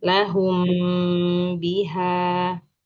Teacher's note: Mim bertemu ba ditahan lagi.